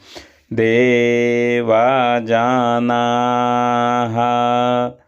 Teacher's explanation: दीर्घ विसर्ग का उच्चारण देर तक होगा, जितना ना का करेंगे उतने इसका भी करेंगे। देवा जानाः पूनन्तु मनसा धियाः।